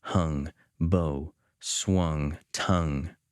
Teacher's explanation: when Hopkins wants to talk about the bell ringing he stretches out his vowels you can almost hear the words gonging like a big Bell